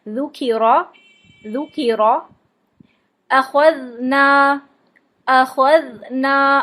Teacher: ذال، سا اور ذا تینوں ہی زبان باہر نکال کے پڑھے جاتے ہیں. زبان کو اوپر نیچے کے دانتوں سے باہر نکال کے اوپر والے دانتوں سے لائٹلی پریس کر کے پڑھیں گے اس کو.